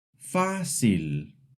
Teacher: The accent mark pulls the stress forward.